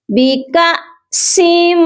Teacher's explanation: حمزہ ساکن کو جھٹکا دے کر پڑھتے ہیں، اسی لیے آپ نے کاف کو لمبا کر کے نہیں پڑھنا بلکہ کاف کو حمزہ کے ساتھ جھٹکا دے کر پڑھا جائے گا۔ · سین کو میم مشدد کے ساتھ ملائیں گے تو غنہ لازمی کیا جائے گا کیونکہ میم مشدد پر ہمیشہ غنہ ہوتا ہے۔